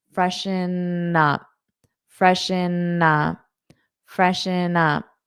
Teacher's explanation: So this N you can hold when you say up